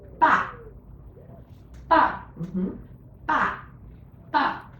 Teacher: you have to actually come down from the highest pitch, go down to the very bottom, like the lowest bottom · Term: fourth tone